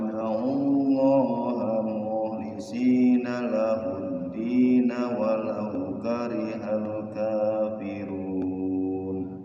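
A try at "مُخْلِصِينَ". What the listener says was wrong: Ya, kha-nya bagusin. Mukhlisina.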